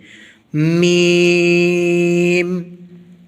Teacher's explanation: میم کو پڑھتے وقت دونوں ہونٹوں کے باہر والا حصہ ملائیں گے اور آواز کچھ ناک میں جائے گی، تب میم کی ادائیگی درست ہوتی ہے، میم۔